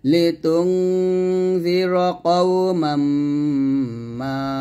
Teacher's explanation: কওমাম এখানে মিমকে ধরবে, গুণনা করতে হবে